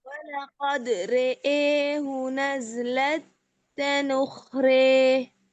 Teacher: رے ہیوی نہیں کریں گے. لائٹ باریک پڑھیں.